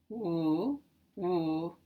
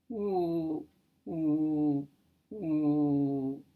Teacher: When we pronounce a W, woo, woo, our lips are rounded and partially open, and there is nothing really stopping the air from flowing smoothly out the mouth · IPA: [w]